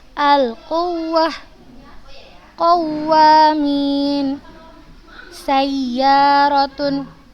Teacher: Jadi pada saat kita baca ayat ada waw dan ya bertasydid, maka kita tinggikan suara kita, maka kita tekankan suara kita.